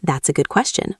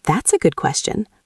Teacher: Notice how goes up at the end of the word question